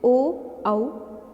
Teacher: ये कंठ और ओष्ठ से बोले जाते हैं, तो ये कंठोष्ठ्य कहलाते हैं।